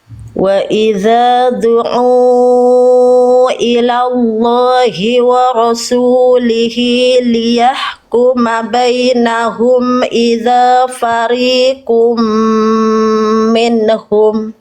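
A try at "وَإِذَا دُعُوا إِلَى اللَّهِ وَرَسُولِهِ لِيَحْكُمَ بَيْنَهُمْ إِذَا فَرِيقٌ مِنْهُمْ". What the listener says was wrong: Bagus.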